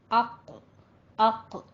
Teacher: अक्सर लिसान कहते हैं जुबान की जड़ और बिलमुकाबिल ऊपर का तालु, इससे कौफ और काफ निकलते हैं